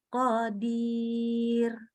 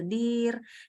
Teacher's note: Kalau ro itu sukun karena berhenti, tapi huruf sebelumnya ya, ro-nya tipis. Jadi qadir.